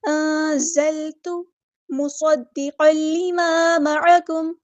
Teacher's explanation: لمبا نہیں کرنا، انزلت ایسے نہیں پڑھنا۔ انزلت مصدقا لما معکم، صاد کی سیٹی واضح کرنی ہے، صاد ہیوی لیٹر ہے، پورا ادا کرنا ہے ، اور میم کی پیش کو اچھے سے ادا کرنا ہے،